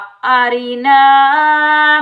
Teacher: ये 3 अलिफ मद्दा हैं, तो तीनों को हम एक एक अलिफ की मिकदार में खींच कर अदा करेंगे। ये रा के नीचे जेर आने की वजह से रा को हम बारीक पढ़ेंगे।